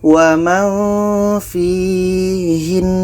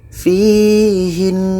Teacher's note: Maka kalau berhenti, nun tasydid ini tetap kita dengungkan.